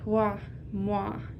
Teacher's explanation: For Quebec French, it would be like moi, where the wa sound becomes longer, like wa, moi, and the tone changes. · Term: diphthongization